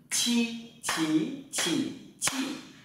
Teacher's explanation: thẳng lưỡi, bật hơi và trở nặng.